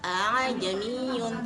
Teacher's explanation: hamzah kedua dibaca pertengahan antara alif dan hamzah ketika membaca ajamiyun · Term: Tashil